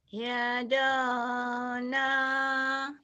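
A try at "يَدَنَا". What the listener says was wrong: yadana bukan yadona ya.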